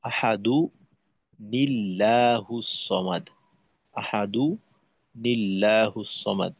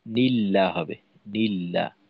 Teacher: তো সেক্ষেত্রে আল্লাহ শব্দের তাসদীদের ডানে জের পাওয়া যায়, আর সুতরাং আল্লাহ শব্দের লাম পাতলা হবে